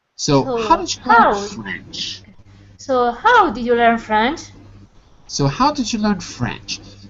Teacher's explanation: The stress is still on French, but it falls. · this is a falling question, not a rising question, because it has how.